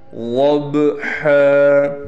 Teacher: حروف قلقلہ میں سے ہے با ساکن ہو گیا، لہٰذا اس با پر آواز کو ہلائیں گے